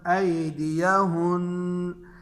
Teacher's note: وقف کی صورت میں بھی نون مشدد پر غنہ باقی رہے گا، غنہ ختم نہیں ہوگا